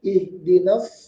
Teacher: Dan di sini sadnya shad murni sadnya bertasdid dan juga dibaca tebal